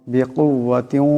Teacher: এখানে ইদগাম হয়ে যাবে। ইদগামের একালি পরিমাণ গুন্না হবে।